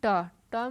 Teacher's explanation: तालू जो ऊपर वाला तालू है वो टक बोलने में टच होता है